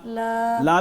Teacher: ला भी बारीक है ना इसको भी हमने जुबान को नीचे रखेंगे